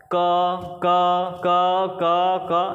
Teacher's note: जब आंख बंद करके सुनोगे तो उसमें अ का उच्चारण सुनाई देगा आपको